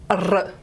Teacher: It's the air makes the articulator vibrate up and down, open, close, open, close, open, close. And if you don't naturally know how to produce this sound, you do need to sort of have quite a tense setting. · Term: alveolar trill